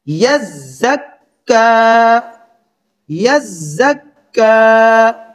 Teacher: آگے پھر کاف، اور کاف کے اوپر کھڑا زبر اور اس کے اوپر پھر شد ہے، یعنی اب ہم دوسرے سٹیپ میں زا اور کاف، باریک کاف ہے، ان دونوں کو سختی سے ملائیں گے